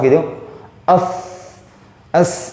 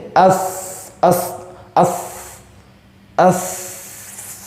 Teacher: Contohnya seperti ini, posisinya terlalu tinggi, bibir tertarik ke atas, 'as' menjadi 'af', jadi posisinya terlalu tinggi, artinya bibir menghalangi suara keluar di antara gigi seri atas dan bawah karena bibir berada pada posisi yang terlalu tinggi. Oleh karena itu, jika posisinya seperti itu, jika seseorang melakukan itu, mereka harus menurunkan bibir mereka.